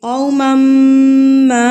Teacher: مم پہ میں غنہ کر رہی ہوں، غنہ کیوں کر رہی ہوں کہ میں نے بتایا تھا نون مشدد اور میم مشدد پر غنہ کیا جاتا ہے، یعنی کہ ناک میں آواز کو لے کے جایا جاتا ہے 1 سیکنڈ کے لیے، اور یا ایک حرکت کے برابر آپ نے غنہ کرنا ہوتا ہے، ناک میں آواز کو لے کے جانا ہوتا ہے۔